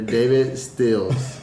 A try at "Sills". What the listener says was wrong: You said Stills. You threw a T in there. Throwing T's, there should be E's, buddy.